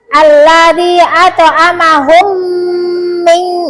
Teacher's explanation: Nah, mim bertemu dengan mim dilebur seolah-olah itu mimnya cuma satu, padahal mimnya ada dua. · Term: idgham mutamasilan